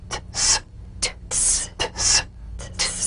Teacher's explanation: Press the tongue against the upper gum ridge for the T drum beat, then crash through with a sharp, soft S.